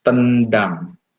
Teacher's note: Tendang, saudara akan merasakan bahwa ujung lidah itu akan tertarik ke belakang karena ada penyesuaian dengan bunyi D yang akan diucapkan. Nah, D yang akan diucapkan ini adalah apikopalatal ya.